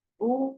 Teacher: భూకి భా అన్నది మహాప్రాణము, దానికి దీర్ఘం ఉన్నది.